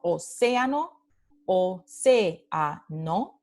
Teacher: estas dos vocales, EA, están en un hiato. Significa que pertenecen a sílabas diferentes